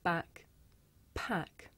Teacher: with the voiceless sound there's a big puff of air you can feel it with your hands